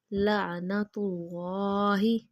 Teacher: اللہ موٹا پڑھیں گے کیونکہ اللہ سے پہلے حرف کے اوپر پیش آ گئی